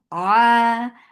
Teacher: ain, from the middle part of your throat, make it 2 counts long.